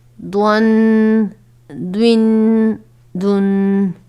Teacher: ضاد بھی حروف مستعلیہ میں شامل ہے جسے ہمیشہ پر پڑھا جائے گا